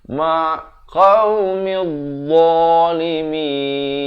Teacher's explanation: dha ni hujung lidah keluar tapi bunyinya tebal